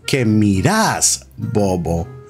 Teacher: So instead of saying, "¿Qué miras, bobo?" in Argentina, they say, "¿Qué miras, bobo?" So the second syllable of miras is emphasized.